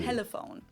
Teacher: a light L that is more pronounced with the tip of your tongue. As in telephone.